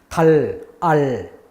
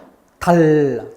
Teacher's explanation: 혀가 입천장에 딱 붙어 있기 때문에 공기는 혀 옆을 돌아갑니다. 혀하고 볼하고 그 사이 공간을 통해서 공기가 흘러가죠. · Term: L 발음